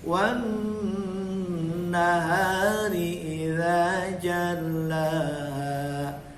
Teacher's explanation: Ingat nunnya tasdid dengungkan